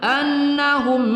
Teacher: annahum mim sukun bertemu hamzah tidak kita dengungkan pada izhar syafawi